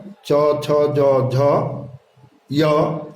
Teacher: शवर्ग च, छ, ज, झ, य और तालव्य श का उच्चारण स्थान तालु होता है।